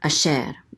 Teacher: so the accent is on the second syllable. Asher.